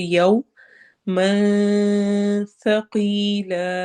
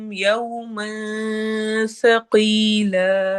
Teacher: اخفا کرنا ہے، نون کی آواز کو چھپانا ہے اور باریک اخفا کرتے ہوئے پڑھنا ہے۔ ثقی قوف کو موٹا کرنا ہے، یا مدہ کرنی ہے اور لا الف مدہ کرنا ہے۔